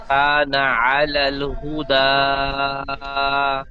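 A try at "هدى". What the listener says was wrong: বানান করবার সময় হাফেজ হু বলে টান দিয়েছেন। হাফেজ হু হু টান হবে না।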